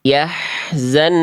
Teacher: Yang A salah karena nun tasdidnya n-nya kurang ditahan.